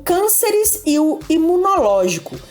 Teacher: são duas palavras proparoxítonas você pode observar que a sílaba mais forte delas é a antepenúltima